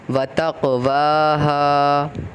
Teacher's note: تق پہ قلقلہ کا قاعدہ ہوگا کیونکہ قاف پہ جزم ہے اور قاف حروف قلقلہ میں سے آ رہا ہے۔